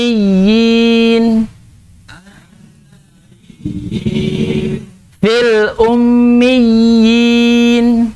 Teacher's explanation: Ya, jadi apabila terdapat ya bertasdid bertemu dengan huruf ya sukun, maka dia disebut dengan mat tamkin, dengan panjang. Cara bacanya dengan dipanjangkan 2 harakat.